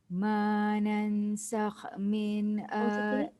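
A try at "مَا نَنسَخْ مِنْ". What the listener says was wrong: Ma nansakh min. Tak cukup. Dia tak boleh nansakh. Dia kena nansakh. Nan tu, nun bertemu sin tu dengungnya 2 harakat. 2.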